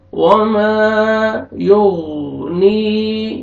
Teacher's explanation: लिलउस्रा वमा युगनी अन्हु मालुहु इज़ा तरद्दा, अलिफ मद्दा अलिफ पर फतहा, मीम को आपने खींचना है। वमा युगनी, या मद्दा या साकिन से पहले कसरा, नून को आपने खींचना है।